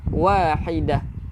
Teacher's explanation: Bila kita berhenti, wajib kita bunyikan hak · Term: tak marbutah